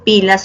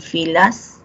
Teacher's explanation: en pilas oclusivo y en filas fricativo